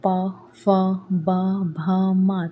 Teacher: तो इसमें आपके मुंह का कौन सा हिस्सा काम कर रहा है? होठ काम कर रहा है ना? तो प वर्ग जो है इसमें प फ ब म आते हैं और इनका उच्चारण स्थान होता है ओष्ठ।